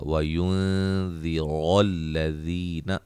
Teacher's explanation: نون ساکن کا اخفا، را کو موٹا